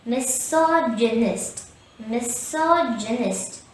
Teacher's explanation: have four syllables the stress is on the second syllable so say misogynist misogynist also we have a schwa here a · The stress is on the second syllable sog.